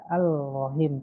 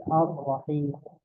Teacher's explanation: karena lamnya tidak dibaca tidak al-Rahim, tapi Ar-Rahim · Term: idgham kamil